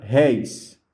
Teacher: a palavra réis, aqui, ela é um ditongo aberto